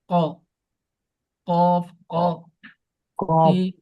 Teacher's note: আর কফটা হলো জিহ্বার গোড়াটা তার উপরের দিকে লাগাইয়া।